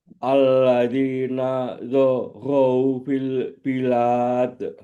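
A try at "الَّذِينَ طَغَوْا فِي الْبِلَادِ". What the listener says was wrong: Nataghaw, taghaw bukan za, taghaw. Alladzina taghaw fil bilad.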